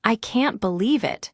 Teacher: you will practice the rising tone at the end of the sentence